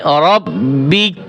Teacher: ওয়াকফ করার পরে এখানে রব্বিক, শুধু কাফের উচ্চারণ থাকবে